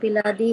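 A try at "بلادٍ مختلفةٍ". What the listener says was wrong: बिलादी नहीं है, बिलादिम मुख्तलिफतिन। किसी के पास बुक है तो कंफर्म कर दें, बिलादिन नहीं है।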